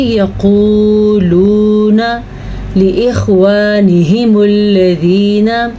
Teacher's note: یقولون، یہ بھی واو مدہ ہے، یہ بھی واو مدہ ہے، تو ان دونوں کو کھینچ کے پڑھیں گے